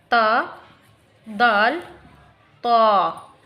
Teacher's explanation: नोक ज़बान को अगर दांतों की जड़ से अगर मिलाते हैं तो वहाँ से अदा होता है ता, दाल, ता। ये चीज़ें जो हैं ज़बान की नोक दांतों के उगने की जगह, यानी जड़ दांतों की जड़ से, ये 3 अल्फाज अदा होते हैं, ता, दाल, ता।